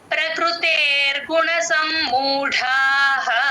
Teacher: pencil తో రాసేసుకోండి పైన ప్రకృతేర్ గుణ సమ్మూఢ మ కింద మత్తు ఉంది సమ్మూఢ లో డ కి మహాప్రాణం కూడా ఉంది గమనించండి